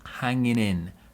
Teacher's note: as well what we notice here is lots of linking so the g in hanging disappears and we get hanging in hanging in there we link the n and the i sound